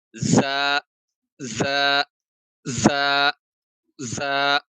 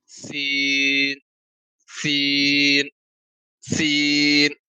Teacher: زا کو سختی سے ادا کریں گے اور سین کو قدرے کم سختی سے ادا کریں گے